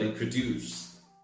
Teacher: the word introduced is pronounced with a stress at the end so it sounds more like this introduced not introduced not introduced